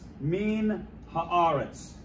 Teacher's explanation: Min haaretz. Here, the noon is assimilated with compensatory lengthening also with the article